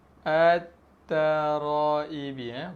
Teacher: Alif lam bertemu dengan ta. Okey, cara bacaan dia kita masukkan lam ke dalam huruf selepasnya.